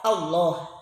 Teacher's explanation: Yadhkurunallah mad asli, Allah alif lam samsiyah dibaca tafhim dengan suara o, Allah, tebal ya dibacanya.